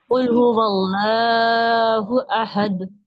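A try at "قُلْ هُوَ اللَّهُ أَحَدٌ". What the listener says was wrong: हमजा की आवाज आना चाहिए। अहद में ऐन की नहीं आना चाहिए।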